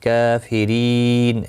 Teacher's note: رو زیر کی وجہ سے باریک پڑھا جائے گا، اور وقف کی صورت میں نون ساکن پڑھا جائے گا، وقف بالاسکان ہوگا، مد العارض وقفی ہوگا، 3 سے 5 الف کی مقدار کے برابر کھینچ کر وقف کریں گے۔